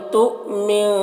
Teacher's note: حمزہ ساکنہ ہے تو جھٹکا لگے گا